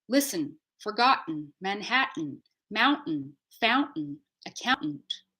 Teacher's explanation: consonants we have the N like listen or Manhattan or forgotten that n on its own no vowel is its own syllable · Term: syllabic consonants